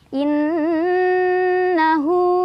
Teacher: cara bacanya berdengung Ya ditahan dulu sampai kerasa getaran ke hidung getaran halus ya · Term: gunah musyaddadah